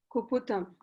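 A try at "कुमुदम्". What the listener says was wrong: Not Kuputam. Very Pu. It is Mu.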